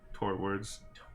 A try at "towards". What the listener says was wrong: I mean, like, there's no R.